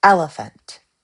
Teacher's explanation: Dactylic, stressed unstressed unstressed.